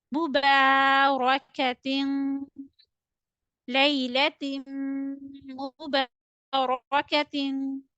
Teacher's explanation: Ta double kasratin. You need to read it with nasal sound. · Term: idgham with gunna